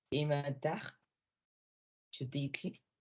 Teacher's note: La mayor fuerza de voz recae en la penúltima sílaba. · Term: acento grave